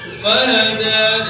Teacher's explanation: ini juga ada mad tabi'i atau mad asli, panjangnya satu alif 2 harokat